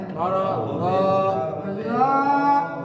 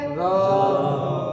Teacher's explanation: র, নরম করে মোটা করে, র, জিহ্বার আগা দাঁতের আগে লাগাইয়া বলেন। র, জিহ্বার আগা দাঁতের আগা, র, নরম হবে মোটা হবে।